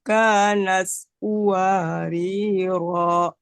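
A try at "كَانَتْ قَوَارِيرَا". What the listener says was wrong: Kanat qawariro. Kemudian bunyi ta jangan terlalu ke ya. Kanat. Tapi kanat. kanat gitu.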